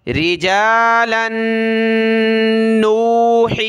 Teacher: لام کو نون کے ساتھ ملائیں گے، ناک میں آواز پیدا ہوگی